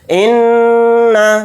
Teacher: نون کے اوپر تشدید ہے تو نون کے اندر غنہ کر کے پڑھیں گے